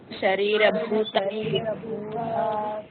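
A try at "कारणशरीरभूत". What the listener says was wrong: there should not be any pause. It is a single word. Karna Sharira Bhuta Vidyasta Malina Tattvam.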